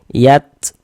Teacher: ada nafas yang mengalir karena di antara sifat huruf ta itu memiliki sifat hames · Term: sifat hamas